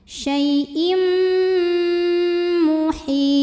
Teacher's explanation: Kemudian ada hukum idgham bi gunnah. Karena ada tanwin kasrah menghadapi huruf mim, maka tanwinnya dimasukkan ke mim. Syai'im disertai bunyi dengung.